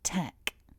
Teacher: So focusing on syllable 1, we have the t sound with a puff of air, a short eh, and then a k with a bit more air leaving the mouth. So it's quite an airy syllable.